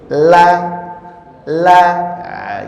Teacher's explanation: huruf lam keluar dengan menggerakkan semua lidah dan bertemu dengan ujung langit-langit mulut.